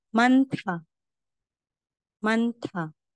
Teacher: Yan po yung aspiration. Ibig sabihin may letter H, may hangin.